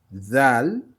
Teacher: le dé, dal, dé, qui ressemble, mais avec un point. Zal, c'est avec la langue sur les dents supérieures, et comme on dit un Z